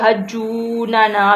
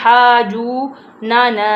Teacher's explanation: اب ہا کہ ہم نے حجو بھی نہیں پڑھا کہ جیسے کہ یہ تشدید ہے، ہم تشدید کی وجہ سے حجوننا بھی پڑھیں گے، پر ہم نہیں پڑھ سکتے کیونکہ ہا اور جیم کے سینٹر میں مد آ گیا ہے، تو اس لیے ہم نے مد کو بھی لمبا کرنا ہے